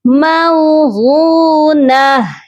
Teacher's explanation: حروف مدہ کو ہم کھینچ کر پڑھتے ہیں. موغو, غاد کو ہم کھینچیں گے کیونکہ اس کے ساتھ واو مدہ ہے